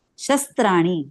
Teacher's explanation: काढली म्हणजे तो तिथे आघात दर्शवणारी आडवी रेश असते शस्त बघा शवर जोर दिल्याशवाय पुढच अक्षर स्पष्ट येणार नाहीय